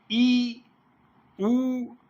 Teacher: ई उ तो संवृत है, मुंह जो है ना एकदम बंद हो रहा है।